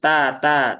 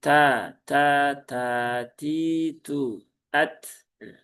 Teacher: Huruf ta itu ya dia sifat hamisnya sifat lazimah. Maka ya tunaikan, ya, keluarkan hamisnya baik kondisi sukun ataupun berharokat. Jadi bukan ta, tapi ta, ta, ta, ti, tu, at.